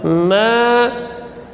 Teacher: Mim huruf tawassut baina syiddah wal rakhawah, keluar dari dua bibir, maksudnya bagian dalamnya. Ma, panjang dua harakat karena ada alif mad. Alif mad ini, alif mad huruf yang keluar dari al-jauf, dari rongga.